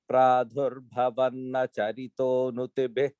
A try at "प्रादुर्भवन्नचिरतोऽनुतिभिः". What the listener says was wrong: The third line, Pradurbhavan chirato, not charito. And the present no. And the end one, make it present no instead of present naha.